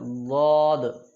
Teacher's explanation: زبان کا کنارہ جب اوپر کے 5 دانتوں سے لگے، دائیں طرف سے مشکل، بائیں طرف سے آسان، یہ اس کا مخرج ہو گیا۔ زبان کا کنارہ جب اوپر کے 5 یعنی آخری دانتوں سے لگے تو وہاں سے حروف ضاد ادا ہوتا ہے